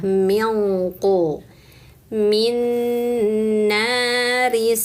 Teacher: Kalau huruf qof eng-nya tebal ya